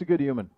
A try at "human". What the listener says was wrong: Fine human. No H there.